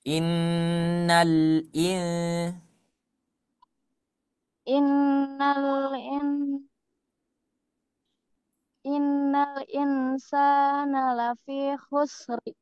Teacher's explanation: innal lamnya jangan qalqalah. Innal tapi dia langsung ke hamzahnya.